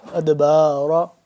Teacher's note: دال ساکن ہے، اس پہ کیا ہو رہا ہے قلقلہ ہو رہا ہے